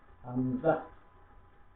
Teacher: হামজা, গলা ধাক্কা দিয়ে উচ্চারণ করতে হবে